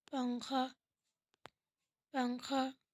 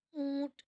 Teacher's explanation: ناک سے نون کی آواز آ رہی ہے